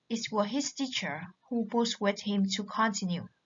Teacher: The tonic accent now falls on teacher. The fact that don't continue is taken as given, and the contrast is between his teacher's attitude and that of his father.